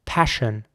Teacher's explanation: Passion fruit is spelled P-A-S-S-I-O-N, and then fruit again, so F-R-U-I-T, passion fruit. Here, it is very important to pronounce the double S like a sh sound. So not s, but sh.